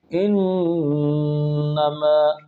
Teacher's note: ان میں نون مشدد غنہ اور ما میں الف مدہ